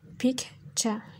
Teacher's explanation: Yəni, burada K və T səsləri arasında loss of plojin oldu.